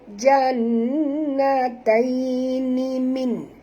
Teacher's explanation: Jannatai, nun bertasydid, ada sabdu ni. Kita kena dengung, tuan-tuan, kerana nun ini bila bertasydid berarti ada 2 nun. Jadi nun mati bertemu nun, memang kena dengung. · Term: wajibal ghunna